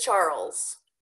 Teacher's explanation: a dark L sound and a Z sound and they are all blended together